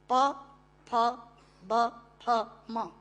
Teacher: प फ ब फ म दोनों होंठ मिलाकर बोले जा सकते हैं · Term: ओष्ठांग